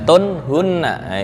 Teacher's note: Tun hunna idhar halqi ya, nggak boleh dengung.